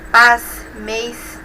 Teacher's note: percebemos a formação do ditongo dos monossílabos tônicos terminados em s